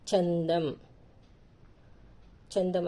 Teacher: చన్ అన్నప్పుడు నకారపు వస్తుంది దం అన్నప్పుడు మకారం మ లాగా పలుకుతుంది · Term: సున్నా ఉన్న అక్షరం